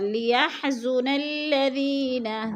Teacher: اور لیحزن الذین، دی یا ساکن سے پہلے دال کے نیچے زیر ہے تو ادھر یا مدہ. یا مدہ کو ہم نے ایک الف دو حرکات کے برابر کھینچ کر پڑھنا ہے